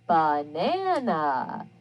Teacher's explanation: it's a mysterious unstressed vowel and it sounds like an uh even though it may be an a or an e or · notice again at the end you hear that uh sound for the a banana so the upside down e represents that schwa where the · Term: schwa sound